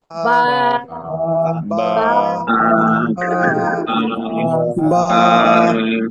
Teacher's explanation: দুই ঠোঁটের ভিজা অংশ থেকে বা অক্ষরটা উচ্চারণ হয়।